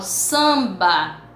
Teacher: nós estudamos quando eu falo samba eu não falo o m o m vai dar apenas um som nasal a vogal que antecede